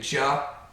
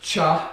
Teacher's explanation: the middle of the tongue to stop to create the cha the ja is voiced the cha is unvoiced again if you can tell you say ja the vocal cords